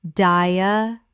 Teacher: The stress is on the 3rd syllable.